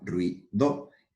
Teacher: el diptongo formado por la vocal cerrada u y la vocal cerrada I